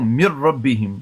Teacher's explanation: नहीं आ रही ना, तो इसका मतलब है ये इदगाम कामिल हो गया, नून का रा में इदगाम मुकम्मल हो गया।